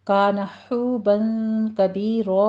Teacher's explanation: کرنے ہیں، مد صلہ صغرا ہے، کان حوبا کبیرا میں بھی حو میں ہا وسط حلق سے ادا کرتے ہوئے واو مدہ ہے، دونوں ہونٹوں کو گول کر کے 2 کاؤنٹ کرنا ہے